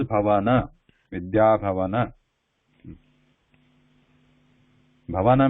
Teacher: Actually, it is a full na there. It is not half na. In English they write like n at the end, so it sounds like Vidya Bhavan. But in the Sanskrit word is Bhavana, Vidya Bhavana.